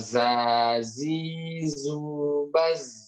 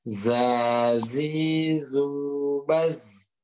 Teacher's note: makhrajnya adalah ujung lidah ketemu gigi seri bawah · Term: huruf zai